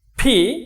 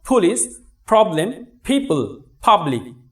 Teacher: দুটি ঠোঁট একত্রিত হয়েছে এবং এখান থেকে একটু কি বাতাস বের হয়ে যাচ্ছে